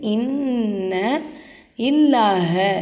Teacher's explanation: சத்து செய்யப்பட்ட நூன் வந்திருக்காமா. இதை நம்ம என்ன செய்யணும், நல்லா அழுத்தி உச்சரிக்கணும். இன் அப்படின்னு சொல்லிட்டு இன்ன இல்லாஹ, இந்த பாருங்கள் லாமுக்கு மேலே சத்து வந்துருக்கா, இந்த நூனை கொண்டு வந்து இந்த லாமில் ஜாயின் பண்ணணும்.